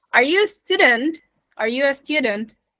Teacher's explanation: there is an upward or Rising uh melody or a tune to it we have the rising and falling at the same time yeah